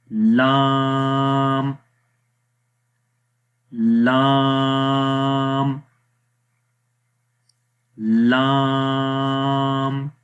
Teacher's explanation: जब हम लाम में ज़ुबान की साइड को सामने वाले मुकाबिल के जो तालू है वहाँ पर लगाएंगे, जो तालु दवाहिक से सनाया तक का है, तो उस वक्त लाम अदा होता है। और इस लेफ़्ट साइड इमेज में भी आप देखें, ये ज़ुबान की जो साइड है वो सामने तालु पे लग रही है। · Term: लाम का मखरज